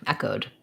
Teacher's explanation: we have the eh sound, first syllable stress, the O vowel, and then a D.